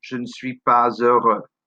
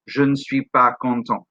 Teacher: Also note that after pas, because pas ends with an s, which normally is silent, because heureux starts with a vowel sound, we do the liaison